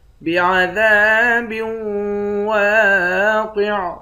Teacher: دال کے بعد الف ہے، 1 الف کے مقدار کھینچیں گے، الف حروف مدہ ہے۔ با کو واو کے ساتھ ملا کر یہاں ادغام کریں گے، یعنی یہاں بھی غنہ کر کے پڑھیں گے۔ بعذاب واقع، واو کے بعد الف ہے، الف حروف مدہ ہے، 1 الف کے مقدار کھینچیں گے، قاف کو موٹا پڑھیں گے، آخر میں عین ساکن ہے۔